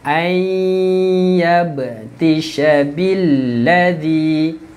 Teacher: Nun masuk ke dalam ya. Dengung 2 harakat.